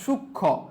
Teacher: যুক্ত ব্যঞ্জন বর্ণের সঙ্গে সংযুক্ত মফলার উচ্চারণ হয় না